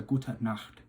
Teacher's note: the CH sound you really want to get from the back of the throat, so it's a Gute Nacht.